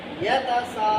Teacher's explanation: یتا کو لمبا نہیں کرنا، سا کو لمبا کرنا. یتا میں بھی زبر ہے، سا میں بھی زبر ہے، لیکن ان زبروں کی شرط مکمل نہیں ہوتی.